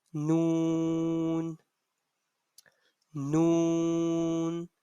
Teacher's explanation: the letter noon is being pronounced from the front edge of our tongue and front pallet noon noon we are using the front edge of our tongue